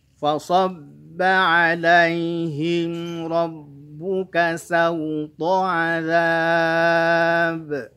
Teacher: fa-nya tipis, sodnya tebal, ba-nya tipis. Jangan fa ikut tebal